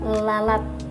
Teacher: udara masih bisa keluar melalui salah satu kedua sisinya atau kedua belah sisi lidah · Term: bunyi lateral